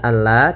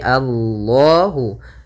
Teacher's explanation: lam tafhim lamnya harus dibaca dengan tebal